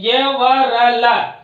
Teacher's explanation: ये चारों वर्ण संवार, नाद, घोष, अल्प प्राण बाह्य प्रयत्नों के द्वारा उच्चारित होते हैं। ये जो यण वर्ण है वो संवार, नाद, घोष और अल्प प्राण बाह्य प्रयत्नों के अंतर्गत आते हैं।